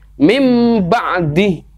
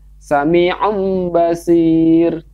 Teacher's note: tanwin ini digantikan masuk ke dalam huruf mim